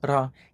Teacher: In a Puerto Rican accent, they still use the regular tapped R, ra, in between vowels.